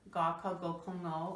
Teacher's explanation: Well, ba is not a velar. Ga, ka, go, kongo are velars.